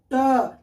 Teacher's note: अब टोठ ट ठ ड, जब देखिएगा आप लोग टोठ बोलिएगा ना, आपका जीभ जो है ना एकदम स्लो मोशन में बोलिए ट। देखिए आपका जीभ जो है ना अंदर की ओर धसेगा, यानी कि मुड़ कर अंदर की ओर धसता है और फिर बाहर निकलता है अचानक, तो उसे कहते हैं मूर्धा।